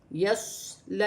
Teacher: صاد موٹا ہے، سٹی کے ساتھ ہے